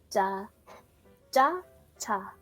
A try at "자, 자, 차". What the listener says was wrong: Okay, so you're saying the first and the second similar. It's cha, ja, and cha.